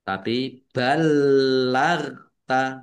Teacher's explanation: Ghain sukun bukan kolkola, jangan dipantulkan